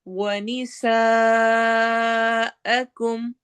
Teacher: سین میں سٹی والی آواز ہوگی اور مد کو لمبا کرنا ہے